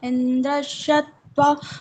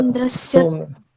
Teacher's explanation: यहाँ पर जो दंत्य सकार है वो आपका तालु वाला लग रहा था